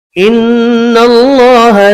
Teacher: نون مشدد پر غنہ کریں گے.